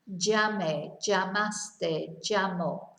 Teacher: the double L is pronounced y in Spain mostly. You might hear j.